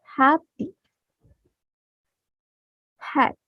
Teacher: it makes very little sound because it's just really really your breath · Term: voiceless sound